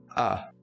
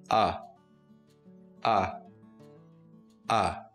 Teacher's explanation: by opening our mouth keeping our lips and our jaw relaxed we keep the whole tongue down on the floor of the mouth and we blow out a short pulse of air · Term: open mid back unrounded vowel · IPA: /ʌ/